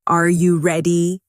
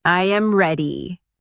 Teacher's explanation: the pitch of their voice goes up at the end